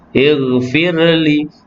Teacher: Ighfir, kerana ra yang dalam kalimah firli ni ra yang tarkik nipis. Ighfirli, fir dia ada getaran sedikit saja, tidak kuat sangat.